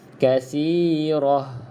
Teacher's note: Dan sahabat-sahabat yang baru belajar terutamanya, nampak kita ada huruf ta, tetapi bila kita waqaf, kita berhenti, untuk ta bulat ni kita tak baca kasirat. Kita akan baca bunyinya seperti huruf ha.